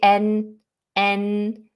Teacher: with the tip of the tongue on the alveolar ridge which is just behind your top teeth